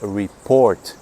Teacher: Você põe a sílaba tônica, você põe a força da palavra em por, né? Então a palavra fica report, não report.